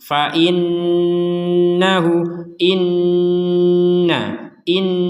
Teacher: kalau bertasdid itu tidak hanya ditekan tapi didengungkan